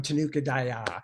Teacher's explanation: I emphasize the last syllable, so they become Tanuka Daya.